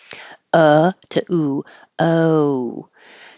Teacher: where your tongue is low in the middle o and then the back of your tongue Rises as your lips round to make the O so you should finish in an oo position uh to oo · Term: American o